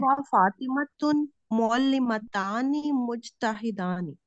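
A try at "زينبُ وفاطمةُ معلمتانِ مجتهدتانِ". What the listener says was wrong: फातिमतुन नहीं बस होगा, बाकी सारा बिल्कुल आपने ठीक जैनबु व फातिमतु मुअल्लिमतानी मुज्तहिदानी, ठीक हो गया।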